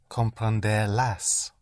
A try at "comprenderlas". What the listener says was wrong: yes, but don't hit the ending.